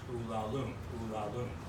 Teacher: And the title Ulalume is in Anapestic meter. It's unstressed, unstressed, stressed.